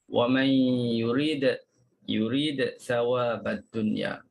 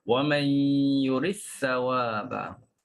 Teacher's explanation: kita dah masukkan dal dalam sa, hilanglah qalqalah tersebut.